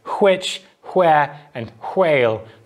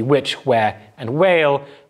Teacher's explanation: For most speakers of English nowadays, of course, this will just be which, where, and whale with the same voiced w.